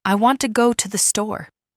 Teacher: In this sentence, want and store are stressed and the other words are said quickly and softly.